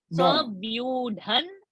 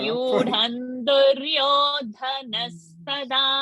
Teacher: anuswara will become na over here.